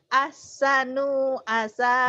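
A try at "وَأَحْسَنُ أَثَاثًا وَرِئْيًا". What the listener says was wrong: Nunnya pendek. Ahsanu asa.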